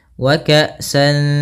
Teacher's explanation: Maka cara membacanya yaitu kita samarkan suara tanwinnya kepada huruf dal. Wa ka'san, seakan-akan langsung melafalkan huruf dal. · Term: ikhfa hakiki